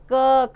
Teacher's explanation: क वर्ग के स्पर्श व्यंजनों का उच्चारण स्थान कंठ है, अतः इन्हें कंठ कहते हैं